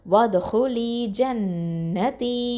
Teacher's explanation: இந்த நூன் முஷத்ததால் என்ன பண்ணணும், அக்மல் குன்னா கொடுக்கணும்